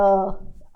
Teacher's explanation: गले से, ठीक है। कोई गले पे हाथ लगा के बोल के, य, आवाज पूरी कांप जाएगी आपकी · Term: अंतस्थ व्यंजन